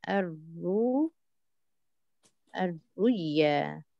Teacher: we have ibdal hamza sukun to waw and the ibdal waw sukun to ya and the idgham